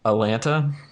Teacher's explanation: If they've lived here for a little while, they'll drop one of the T's, usually the first one, and so it becomes Atlanta.